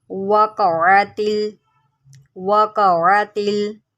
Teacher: क़ाफ को जो है मोटा करके पढ़ें